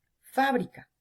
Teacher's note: K, última, bri, penúltima y fa, antepenúltima. Como cargo la voz en la antepenúltima, palabra esdrújula.